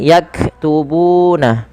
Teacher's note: panjangkan bu sepanjang 2 harakat karena ia mad tabi'i